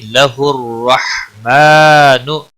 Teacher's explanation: را زبر کی وجہ سے پر پڑا جائے گا